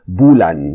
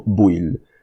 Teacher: the L's become an I, and then the N's become an L, and then if it's a 2-syllable word, bulan, there's a tendency for the ending, the last vowel to get lost.